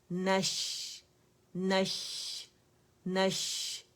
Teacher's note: وسط اللسان سے شین ادا ہوتا ہے. تو آپ لوگوں نے کیا کرنا ہے کہ پراپر مخرج پہ آپ نے جانا ہے, نون کے بھی شین کے بھی, اور شاورنگ ساؤنڈ آنی ضروری ہے.